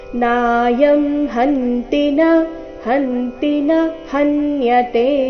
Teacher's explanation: ನಾಯಂ ಹಂತಿನ ಈ ರೀತಿ ತೀನ ದೀರ್ಘ ಮಾಡಬಾರದು